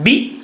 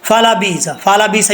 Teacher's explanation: اور جو حمزہ ساکن ہوتا ہے، حمزہ ساکن کا ساؤنڈ آتا ہے، جھٹکے کے ساتھ پڑھا جاتا ہے